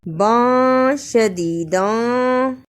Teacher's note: ادا کرنے کا طریقہ تنوین کی آواز کو تھوڑی دیر ناک میں چھپانا ہے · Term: اخفا